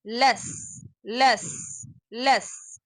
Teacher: Just a quick reminder, the lam is articulated from the tip of the tongue touching the gums of the first 8 teeth, like this, and the sin is the tip of the tongue is touching the inner part of the lower teeth, and the sound is escaped from between the two teeth, making this whistle unique sound